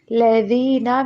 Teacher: زبان جو اوپر والے اور نیچے والے دانت ہیں سامنے والے، ان کے درمیان میں زبان کی نوک کو رکھیں گے، تب جا کے ذال ادا ہوگا